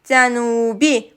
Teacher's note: Burada U saiti uzun tələffüz olunur və U qapalı saitdir